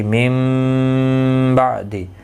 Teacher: نون کی آواز میم میں بدل جائے گی، من بعد اخفاء شفوی ہوگا۔ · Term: قلب